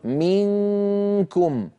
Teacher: من أيضا ينقفل المخرج عند أقول منكم، من هنا كامل الصوت يمر عن طريق الخيشوم، من طريق الفم ما عاد في شيء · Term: إخفاء